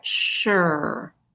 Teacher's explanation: That S sounds like an SH. The UR, and an E at the end.